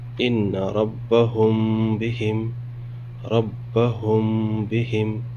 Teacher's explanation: اخفاء شفوی کی مشق کرتے ہیں۔ میم ساکن کے بعد اگر با آئے تو غنہ کے ساتھ اخفا ہوگا